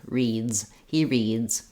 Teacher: I'm going to have the z sound because my D is voiced